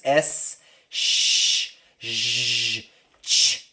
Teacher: S's are what we call sibilants. S, sh, sh, ch. All these sounds are very high frequency. They're like 3K above.